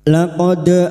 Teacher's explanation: dal sukun yang mati asli di tengah kalimat, qalqalah sugra. Jangan lupa dipantulkan.